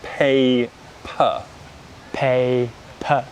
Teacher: notice how we unstress that second syllable and the mouth doesn't open and we use the schwa